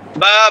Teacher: প্রত্যেকটাই ঠোট লেগে লেগে স্পর্শ করে করে খুলছে পা ঠোট লেগে খুলছে ফা স্পর্শ করে খুলছে বা ভাত্যেকটাতেই ঠোট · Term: উঠব বর্ণ